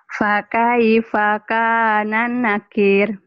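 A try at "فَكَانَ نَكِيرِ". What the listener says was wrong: Dan nakir jangan gitu. Jangan digenangin. Fakana nakir. Datar.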